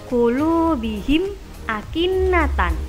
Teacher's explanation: Nah, inilah kenapa dinamakan izhar syafawi. Karena mim adalah huruf yang keluar dari 2 bibir, dan ketika bertemu huruf hijaiyah selain mim dan ba dibaca jelas.